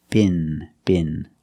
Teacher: Use the short I sound like this is. It's more open. And the regular N.